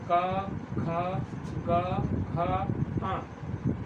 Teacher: तो का वर्ग के जितने भी 4-5 वर्ण हैं वह कंठस्थ कहलाएंगे, क्योंकि ये कंठ से उच्चारित होते हैं।